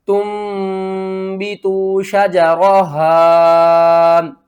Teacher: اقلاب کریں گے، نون کو میم میں بدل کر پڑھیں گے